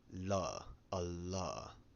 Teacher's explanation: Elle makes something similar to a voiced alveolar lateral approximant, la, a la. Elle evanescente.